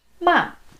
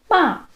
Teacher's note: So it's a falling tone. Starts a little bit higher and falls down. It doesn't necessarily have to start quite as high as your first tone, ma, but if you can get pretty close to that where it's starting from and then let it drop down, it'll be a lot clearer. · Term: fourth tone